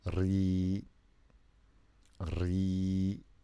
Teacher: The ra with Kasrah is ri. And the ya makes the Kasrah longer.